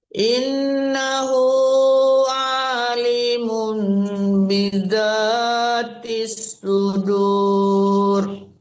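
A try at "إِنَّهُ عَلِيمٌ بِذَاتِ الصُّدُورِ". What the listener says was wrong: Innahu alimum. Dilinya panjang, jangan a-nya. U-nya panjang, Ibu.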